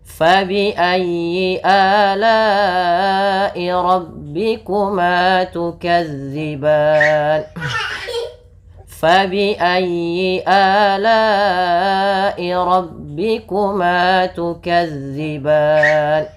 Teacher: sebelum huruf sukun Arid ini ada huruf mad berupa Alif maka ini kita panjangkan berapa harakat boleh dua boleh empat